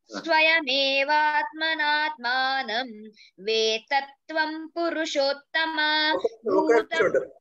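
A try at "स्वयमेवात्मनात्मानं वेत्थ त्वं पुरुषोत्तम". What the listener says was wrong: వేతత్వం అంటున్నావు, వేత అని కూడా ఒత్తుత చెప్తే సరిపోయేలా. వేత్తకు ఒత్తుత, వేతత్వం పురుషోత్తమ చెప్పడం లేదండి.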